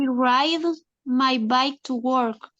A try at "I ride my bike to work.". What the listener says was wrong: Excellent. I ride. Correct.